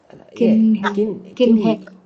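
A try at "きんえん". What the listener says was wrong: ಹೇ ಅಲ್ಲ, ಕಿನ್ ಎನ್. ಕಿನ್ ಎನ್. ನೀವು ಹೇ ಅಂತಿದ್ರಿ, ಕಿನ್ ಹೆನ್ ಅಂತಿದ್ರಿ. ಕಿನ್ ಎನ್.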